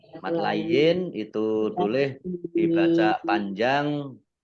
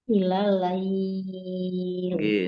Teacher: Mat layin itu boleh dibaca panjang 2 harokat, 4 harokat atau 6 harokat boleh.